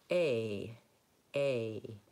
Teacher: But in English, we hold it longer and we glide to the I vowel. So we say A, A.